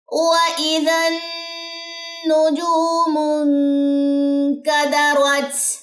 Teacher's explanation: پہلا تو نون مشدد کا غنہ ہے اور دوسرا اخفا ہے، نون ساکن کے بعد کاف